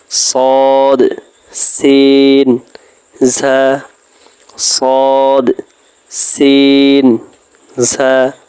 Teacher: জিহ্বার আগা সামনের নিচের 2 দাঁতের আগার দিকে লাগাইয়া